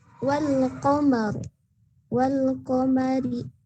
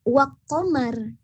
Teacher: Alif lamnya dibaca secara jelas, tidak disamarkan atau tidak dimasukkan. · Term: alif lam Qamariyah